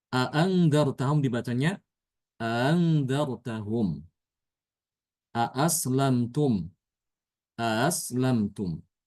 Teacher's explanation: dia itu membaca hamzah yang kedua itu ya antara hamzah dengan huruf mad · Jadi memudahkan pengucapan hamzah yang kedua. Hamzah yang pertama sama ya. Untuk hamzah yang pertama itu tidak diubah. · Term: mentasilkan hamzah yang kedua, tashil